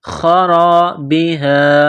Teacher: خا جس طرح انسان گلے سے بلغم نکالتا ہے اس خا کو نکالنا ہے